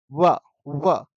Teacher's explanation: जब व का उच्चारण कर रहे हैं तो आपके दोनों होट जो है ना साइड से चिपक रहे हैं व व ऐसे दोनों होट ऐसे गोल सा मुंह बन रहा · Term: वकार, दंतोष्ठ